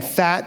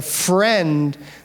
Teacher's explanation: Again, fat, that f is really strong. In the friend, the F is harder to hear, right? Because now we're blending those two together.